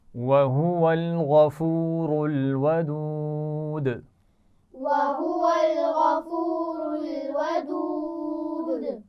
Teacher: اس میں غین موٹا پڑھا جائے گا، را موٹی پڑھی جائے گی